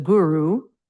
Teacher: the g is a hard g sound and the u is the ooh sound